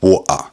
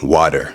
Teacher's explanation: Now, usually in London especially, we speak with a glottal stop. So a word like water would become water, and American English would be something more like water.